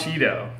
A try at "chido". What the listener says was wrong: No, not like Cheeto. Chido.